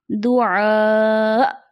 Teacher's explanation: جب حمزہ پہ ساکن ہوگا، حمزہ وقف کریں گے تو وہاں حمزہ کو جھٹکے سے ادا کریں گے. جیسے دعاء، اندر جھٹکا نکلے گا، جھٹکے سے اس کی ادائیگی ہوتی ہے.